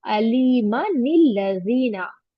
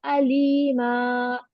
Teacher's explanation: अगर मिलाकर पढ़ रहे हैं तो ये तीनी नून पढ़ा जाएगा, और अगर हम यहाँ पर आयत पर स्टॉप करें तो तीनी नून नहीं पढ़ा जाएगा। अब अगर हम इसको मिलाकर पढ़े तो अलीमा निल्लज़ीना, और अगर स्टॉप करें तो अलीमा, टू काउंट करके स्ट्रेच करेंगे और यहाँ पर नूने कुतनी को ड्रॉप करेंगे और अल्लज़ीना।